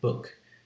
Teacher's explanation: It's a high back vowel, but it's a lax version of it.